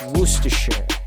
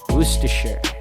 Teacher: you actually take out the first r sound